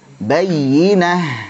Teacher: ta marbutah di akhir jadi ha, jangan lupa alirkan ya